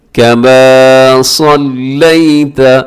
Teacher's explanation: सौद मोटा पढ़ा जाता है